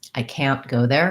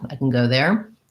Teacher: I'm going to be much more clear in ah, like in the can't, and more reduced in the unstressed can.